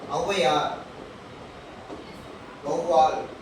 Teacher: உதாரணத்துக்கு ஔவையார், வௌவால், இதெல்லாம் அவு வந்து சொல்லோட முதல்ல வந்திருக்கு, முதல்ல ஒன்றரை மாத்திரையா குறைந்து ஒலிக்கும் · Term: அவுகார குறுக்கம்